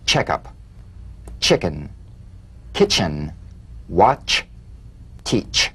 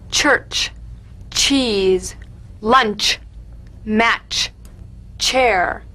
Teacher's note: Feel a sharp, crisp, percussive sensation between the tip of the tongue and the gum ridge. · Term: crisp staccato ch